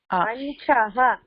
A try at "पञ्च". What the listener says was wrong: இல்ல அதுல விசர்கா இல்ல, அதனால பஞ்ச அப்படின்னு சொல்லு.